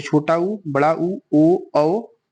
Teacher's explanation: जिन स्वरों के उच्चारण में ओठ गोलाकार बन जाएंगे वे वृत्तमुखी, जैसे छोटा ऊ, बड़ा ऊ, ओ, औ और आ।